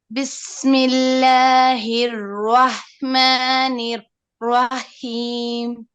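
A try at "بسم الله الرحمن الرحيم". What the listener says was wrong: So you just need to repeat it because I know you're afraid from your ha, so you make pause. So keep saying Rahman, Nir Rahim, Nir Rahim, Nir Rahim, Nir Rahim. Since you'll be able, because you're worried about the ha, so this make more mistakes. Try to relax, and your ha is not bad, and focus on the ra more. My advice to focus on your ra.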